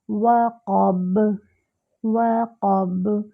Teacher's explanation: قاف جو ہے وہ موٹا کر کے ادا کریں گے، با پہ قلقلہ ہوگا ۔ وقب، وقب، آواز یعنی پلٹ کر آئے گی۔ وَمِن شَرِّ